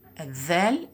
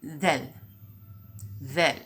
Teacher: We use the tip of the tongue with the upper teeth in pronouncing this in Dhal.